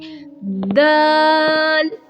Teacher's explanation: دال کو زبان کی نوک اوپر کے دانتوں کی جڑ سے لگا کر ادا کرتے ہیں